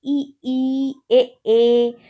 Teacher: हम अग्र से बोलते हैं, आगे से बोलते हैं जिह्वा के, इसीलिए अग्र स्वर में आता है